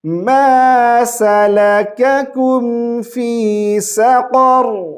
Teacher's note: قاف کو اور را کو موٹی آواز سے پڑھیں گے